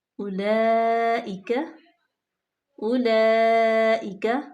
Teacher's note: یہ مد متصل ہے کیونکہ حمزہ اسی کلمے میں ہے تو اس کو ہم 4 الف کے برابر لمبا کریں گے